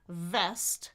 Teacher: With vest, it's teeth and bottom lip, right? And there's friction there.